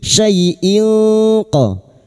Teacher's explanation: Kulli syai'in, syai fathah bertemu ya sukun diturunkan huruf lin. Syai'in qa kasr tanwin bertemu qaf ikhfa hakiki, kita samarkan bunyi kasr tanwin dan mendengung selama 3 harakat